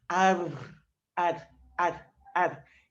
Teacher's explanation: ao sonzinho mais complicado que a gente tem de adquirir que aquele r que treme a ponta da língua no céu da boca aquela árvore ar ele é rapidinho a pontinha da língua tem